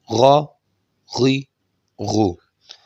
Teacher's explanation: جیسے گلے میں کوئی چیز پھنس جاتی ہے تو اس کو نکالنے کی کوشش کرتے ہیں، ایسے کھرکھراہٹ کی جو ساؤنڈ نکلتی ہے، یہی ساؤنڈ آپ نے غائن اور خا کے اندر لانی ہے، تو یہ آپ کا غائن اور خا ادا ہو جائے گا. · غائن اور خا کا مخرج جو ہے یہ ہے ادنی حلق، جو ہماری زبان کے جڑ کے ساتھ، جہاں سے ہماری زبان سٹارٹ ہو رہی ہے، جو زبان کی جڑ ہے، یہ ہے ادنی حلق.